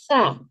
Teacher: Jangan sya ya, itu sa yang ujung gigi ya.